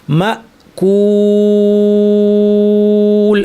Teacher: কুল যখন বলি, দেখেন জিব্বাটা কিন্তু এখন আর বসে নাই, জিব্বাটা এরকম একটা শেপে চলে আসছে এবং ঠোঁটও কিন্তু আর স্বাভাবিক অবস্থায় ঠোঁট গোল হয়ে পেশের আকৃতিতে চলে আসছে